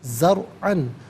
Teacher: را ساکن ما قبل زا پر زبر ہے، را ساکن کو پر کر کے پڑھا جائے گا